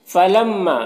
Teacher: میم مشدد ہے تو یہاں پر غنہ ہوگا، اور الف مدہ ہے تو ایک الف کے برابر کھینچیں گے